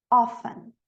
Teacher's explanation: Em algumas regiões fala o T, mas a maioria das vezes não. Often. É mais usada a pronúncia sem o T.